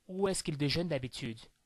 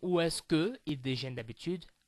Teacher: I'm not saying où est-ce que ils déjeunent d'habitude. I make the liaison, the link between ou est-ce que and il, because il starts with a vowel and que ends with a vowel, so combining both it will be qu'ils.